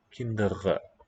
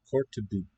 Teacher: Onset R, kinderen, uvular trill. Coda R, retroflex, tongue curling.